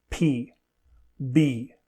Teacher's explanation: To make both of these sounds, the upper and lower lips are pressed together, stopping air from coming out. The sound is made when the lips move apart and the air is released. · The sound is made when the lips move apart and the air is released. Both /p/ and /b/ are clear in word-initial position because they are both aspirated